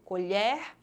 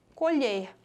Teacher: na primeira palavra, a letra E saiu com o som aberto e na segunda saiu com o som fechado.